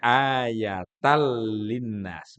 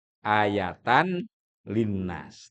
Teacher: Mesti kalau dibaca sendi-sendi jadi ayatan linnas. Tapi karena disambung di mana tanwin bertemu lam bacaannya idgham bila ghunah.